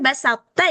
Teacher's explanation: sisinnya itu harus gimana caranya tetap tipis, jangan ikut tebal karena dia ini diapit huruf ee tipis ini ya kan.